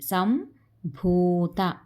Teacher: అనుస్వరం పక్కన పావర్గం కాబట్టి ఇది మకారంగా మారిపోయిందనమాట